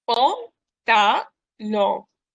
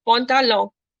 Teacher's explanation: मैं जो last n है वो नहीं pronounce करो. I'm making it nasal.